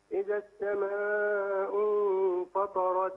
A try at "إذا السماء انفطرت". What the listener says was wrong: مد. مد اربع حركات. إذا السماء انفطرت. مد أربع حركات.